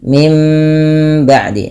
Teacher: Apabila ada nun mati bertemu dengan ba suara nunnya dirubah menjadi suara mim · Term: iqlab